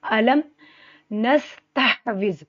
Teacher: سین پر سٹی کی آواز آئے گی